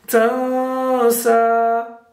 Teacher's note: standing fatha means 2 seconds, so it will be prolonged for 2 seconds.